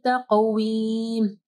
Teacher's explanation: قاف کو جو ہے ہیوی پڑھنا ہے، اور قاف کے اوپر کلکلہ کرنا ہے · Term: قلقلہ